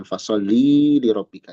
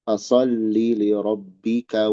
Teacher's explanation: di sini li jangan panjang